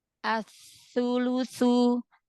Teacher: Sa di sini ada tasydid, berarti sa-nya ada 2.